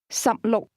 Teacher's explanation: 16 is pronounced with two low-level tones.